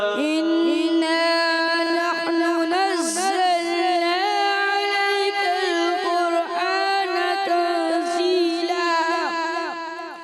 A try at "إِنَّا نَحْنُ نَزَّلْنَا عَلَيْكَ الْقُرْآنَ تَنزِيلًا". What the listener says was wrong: کوشش کی، غنہ تھوڑا کمزور ہوا مگر اچھی کوشش. پھر دوبارہ ایک مرتبہ کوشش کریں، پڑھیں.